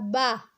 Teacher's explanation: ہونٹ کا اندرونی حصہ، گیلا حصہ جب آپس میں مل کر کھلتا ہے تو با ادا ہوتا ہے